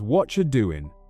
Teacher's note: The T and the Y combine to make a ch sound.